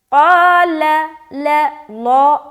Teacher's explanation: قال ان اللہ اصطفاہ، قال، قاف الف زبر قا، لام زبر لا، قال، یہاں پر دیکھیے حرف قاف جو ہے یہ موٹا ادا ہوتا ہے، لہٰذا اسے موٹا ادا کریں گے، قال، قال، قال، الف بھی موٹا لیکن لام کو باریک رکھنا ہے